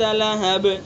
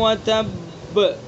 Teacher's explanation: لہب کے اندر بھی قلقلہ ہوگا لیکن وتب کے مقابلے میں کم قلقلہ ہوگا چونکہ یہاں پر سکون وقفی ہے